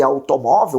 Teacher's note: Olha só, eu tenho as paroxítonas terminadas em L, automóvel, por exemplo, né? Eu tenho o mó, que é pronunciado com mais força, uma paroxítona terminada em L.